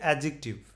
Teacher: এই ডি এবং জে দুটাই কিন্তু কনসোনেন্ট দুটার মাঝখানে কিন্তু কোন ভাওয়েল নেই যার কারণেই এদের একজনকে বিসর্জন দিতে হবে এবং সাধারণত প্রথমটাই বিসর্জিত হয় প্রথমটাকেই বিসর্জন দেওয়া হয় তাকে বিসর্জন